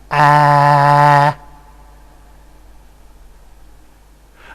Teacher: a reference point where the tongue is extremely low and has a very much front quality, the most front quality, and the result would be something like ah.